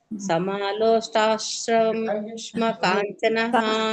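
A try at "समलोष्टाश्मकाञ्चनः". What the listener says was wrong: juice ಕುಡಿತಿರಲ್ಲ ಸ್ಟ್ರಾ ಸ್ಟ್ರಾ ಬರಬೇಕು ಅಲ್ಲಿ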